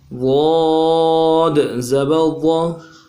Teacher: 3 الف کی مقدار میں کھینچیں گے، آخر میں قلقلہ کریں گے، دال ہے، ضاد زبر ضا۔